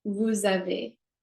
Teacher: vous, the S is silent, vous avez, you hear it as a Z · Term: liaison